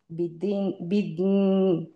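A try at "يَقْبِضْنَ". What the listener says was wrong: আপনি বিদ পর্যন্ত থাকেন, বিদ পর্যন্ত থাকেন, নুনটা আপনি জাস্ট নাকে চলে যাবে অটোমেটিক্যালি, বিদ। সফট হন, আপনার পড়াটা হচ্ছে খুব মানে হার্শ হয়ে যাচ্ছে, হার্শ না, একটু সফট হন, তাহলে পারবেন।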